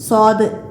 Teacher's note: നാവിൻ്റെ അറ്റവും മുൻപല്ലുകളുടെ ഇടയുമാണ് സ്വാദ്. ഇവിടെ നിന്ന് തഫീമോട് കൂടിയാണ് പുറപ്പെടുന്നത്.